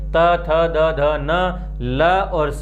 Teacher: दांतों से इन वर्णों का उच्चारण करते हैं। आगे बढ़ करके जीवा दांतों को स्पर्श करती है इन वर्णों के उच्चारण में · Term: दंत्य वर्ण